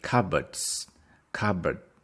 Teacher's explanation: cupboard the stress is on the first one